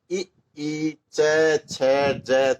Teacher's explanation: तो जीभ थोड़ी सी पलट के और कंठ से ऊपर यानी तालु को टच करती है